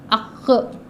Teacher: زبان کی جڑ چھوٹی زبان کے پیچھے کے حصے سے لگایا جائے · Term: قوف